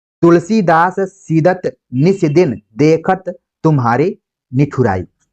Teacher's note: स द त तीनों क्या है? दंत उच्चारण स्थान से लिए गए हैं